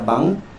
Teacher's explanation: Okey, N dengan K, kalau ikutkan dia eja dengan nun dengan kaf. Tetapi di sini sebutan kita tak sebut dengan jelas huruf N tersebut.